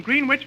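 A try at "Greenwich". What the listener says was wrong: that's not green witch you see here in New York it's pronounced grenage grenwich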